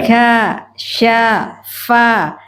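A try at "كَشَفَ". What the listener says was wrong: Nah, huruf 'fa' itu agak terlalu tebal. Kasyafa, ulangi 'yafa'.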